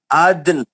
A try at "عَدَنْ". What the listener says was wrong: हाँ, आप दाल को साकिन नहीं कर रहे, नून को साकिन करना है ना, अदन अदन। नून का जेर नहीं पढ़ेंगे, नून को साकिन करके वफ करेंगे, नून छोड़े जाएंगे क्या पूरा?